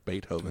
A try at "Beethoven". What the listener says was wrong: Except you don't pause though. You don't need to pause. You just say Beethoven.